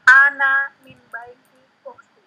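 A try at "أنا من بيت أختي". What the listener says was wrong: Nah, ana min baiti ukhti. Nah, sahih. Ana min baiti ukhti. Sahih, betul.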